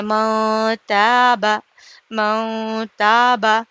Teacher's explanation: نون کی آواز کو ناک میں چھپا کر ایک الف کے برابر چھپا کر پڑھیں گے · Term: اقفا